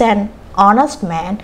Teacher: එතකොට මේ common noun singular කරන්න ඕන වුණාම අපි a සහ an යොදනවා. an යොදන්නේ මෙතන honest h තිබුණාට මේකේ sound එක honest o කියන sound එක එන්නේ.